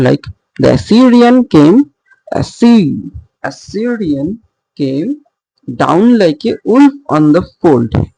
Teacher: There are two unstressed and the final one is a stressed syllable. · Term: anapestic